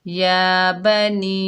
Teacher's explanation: مد منفصل جائز، اس کو 3 الف کی مقدار کھینچ کر پڑھیں گے